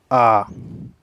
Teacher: विवृत स्वर। वे स्वर जिनके उच्चारण में मुख पूर्ण रूप से खुला रहता है।